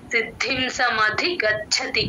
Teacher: గాలి బయటికి వదిలితేనే చ కింద మహాప్రాణం వినిపిస్తుంది అదర్ వైస్ గచ్ఛతి గచ్ఛతి లాగే వినిపిస్తుంది అది గమనించుకోండి సిద్ధిం సమాధి గచ్ఛతి